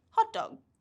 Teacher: we drop the first T sound and just go with the D sound, and we say hot dog.